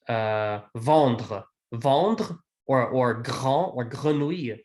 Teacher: But this chevreuil, this R, is often not as strongly pronounced as when we say, for example, vendre, or grand or grenouille. These GRs or DRs, those are much harder R's than when we say un chevreuil.